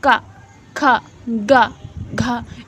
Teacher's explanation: का वर्ग आपका कंठ से हो गया, का, खा, गा, घा। इसमें जीभ किसी भी अंग को टच नहीं कर रही, जो आपकी आवाज़ है वो कंठ से डायरेक्ट निकल रही है